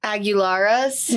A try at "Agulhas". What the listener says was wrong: No, it's Agullalhas. There's no fucking R in it.